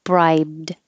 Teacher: this Ed just changes to a d no extra syllable